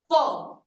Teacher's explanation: जब भी आप फ का उच्चारण करेंगे तो जो आपके ऊपर वाले दंत हैं वो आपके नीचे वाले ओष्ठ को स्पर्श करेंगे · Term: दंतोष्ठ